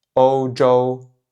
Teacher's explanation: Donc ici, deux fois le premier ton.